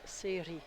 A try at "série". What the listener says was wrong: With the R, you have to roll it.